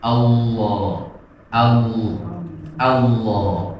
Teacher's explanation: Dan lamnya adalah lam tebal. Lam tebal itu adalah lam yang ujung lidahnya itu rada agak melebar.